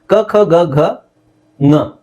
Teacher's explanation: ಇದನ್ನ ಹೇಳೋ ರೀತಿ ಹೇಗೆ ಗೊತ್ತಾ? ಕ ಖ ಗ ಘ, ಕ ಖ ಗ ಘ ಅದೇ ಧಾಟಿಲಿ ಅದನ್ನ ನಾಸಿಕವಾಗಿ ಹೇಳ್ಬೇಕು. ಕ ಖ ಗ ಘ ङ, ಕ ಖ ಗ ಘ, ಕನೇ ನಾವು ಮೂಗಲ್ ಹೇಳೋದು, ಕನ ಮೂಗಲ್ ಹೇಳಬೇಕು.